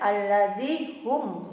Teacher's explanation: Ini hukum bacaannya adalah izhar safawi. Harus jelas membacanya, tidak boleh ada dengung ya. Jadi kita harus langsung menutup bibir kita.